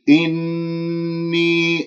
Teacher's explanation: النون المشددة الغنة أكمل ما تكون، هنالك من ينظرها يقول إني جاعل، هذا خطأ، أنت أتيت بالغنة فما في داعي أنه أنت تنظرها.